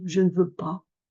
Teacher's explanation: normalement c'est un a ouvert parce que c'est un a un peu accentué qui traîne donc on l'ouvre